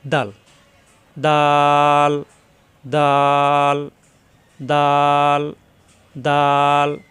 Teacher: দাল মাকরাস হলো জিহ্বার আগা দাঁতের গোড়ায়